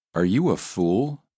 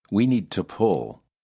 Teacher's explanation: Remember the uh sound is relaxed with the lips almost neutral, just very slightly rounded. By contrast, the ooh is a tense sound. The lips are rounded and tense.